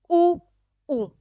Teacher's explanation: ये वे स्वर हैं जिनका उच्चारण करते समय होठ की आकृति गोल हो जाती है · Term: वर्तामुखी